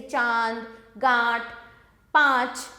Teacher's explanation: अनुस्वार देखेंगे बच्चों, इन वर्णों के उच्चारण में हवा केवल नाक से निकलती है, जैसे कंघा, पंखा, गंगा आदि। अनुनासिक, इन वर्णों के उच्चारण में हवा मुंह और नाक दोनों से निकलती है